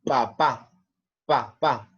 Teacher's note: Listo, nos vamos a concentrar en lo que es el sonido de la P. El sonido va en los labios, ¿sí? Es como un impulso. · Mira cómo se pegan los labios. No tengo vibración. Entonces la P no es una consonante vibratoria.